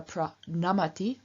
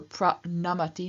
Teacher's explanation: with the n having changed into a retroflex n after the r in pra